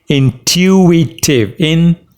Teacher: The stress is on tu.